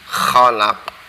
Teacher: Kemudian kholak itu di tenggorokan bagian atas.